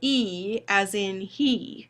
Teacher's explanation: But this vowel, this is the E as in he. It is a high front and it's a tense vowel.